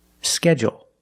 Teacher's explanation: they put the stress only on the first syllable